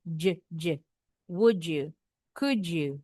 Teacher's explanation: d sama y ini bunyinya jadi seperti huruf Je